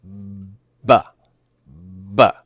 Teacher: do you notice that both of the lips come together and all the airflow stops? P, and then you release. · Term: stop consonant